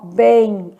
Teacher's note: só que o que tá acontecendo aqui é que a letra M ela tem som de i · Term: som de semivogal